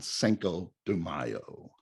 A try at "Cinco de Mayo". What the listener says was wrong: But when you say the word C-I-N-C-O, cinco, not Cinco. Cinq is the French pronunciation for the number 5.